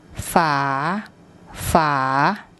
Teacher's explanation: when was saying the word it had a rising tone